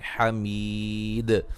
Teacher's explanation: جب وقف کریں گے دال پہ قلقلے کو خوب واضح کریں گے